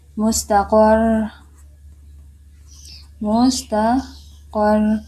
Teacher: اب یہاں پہ تو 2 پیش ہے لیکن وقت میں اس کو ہم ساکن پڑھیں گے، مستقر، را تشدید ہے، پہلے زبر ہے، موٹا کریں گے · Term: را موٹی